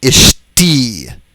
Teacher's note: note the loss of the doubling of the shin